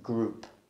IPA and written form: gruːp (group)